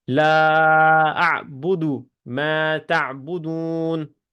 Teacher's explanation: یہ میں لا اعبد ما تعبدون، ٹھیک ہے. ما کے آگے الف ہے تو وہ بھی 2 حرکت لمبا ہوگا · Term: مد